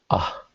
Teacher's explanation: the A sound, which is kind of towards the end of your mouth, before your throat